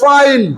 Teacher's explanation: উপরের দাঁত নিচের ঠোট এফ এর উচ্চারণ